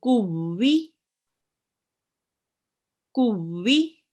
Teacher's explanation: Because it's mushaddad, we will be reading it hardly, and it will be joined to the previous letter. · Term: mushaddad waw